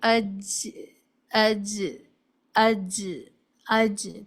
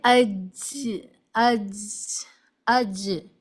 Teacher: یاد رکھیے جب آپ یہ چیز پڑھتی ہیں، ڈیفینیشن جب سنتی ہیں تو یہ ڈیفینیشن صرف اتنی کام آتی ہے کہ زبان کا جو بیچ ہے وہ اوپر کی طرف اس طرح اٹھتا ہے کہ زبان کے بیچ اور اوپر کے تالو کے بیچ میں ایک زوردار ایک ایئر فلو یا ایک ہوا کا ایک خراج وہاں پر محسوس ہوتا ہے، جس سے ایک جیم کی آواز سنائی دیتی ہے، جیسے اج اج اج، اس طرح بالکل ٹچ نہیں کرتا ہے۔ · اب اس طرح پڑھیے، اج، اج، اج، اج، تو آپ دیکھیں گی مڈ پارٹ آف دا ٹنگ وہ ایلیویٹ ہو رہا ہے یا ریز ہو رہا ہے ہارڈ پیلیٹ کی طرف، زبان کا بیچ اوپر کی تالو کی طرف اٹھتا ہے